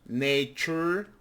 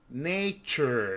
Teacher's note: the T sounds like a ch in some words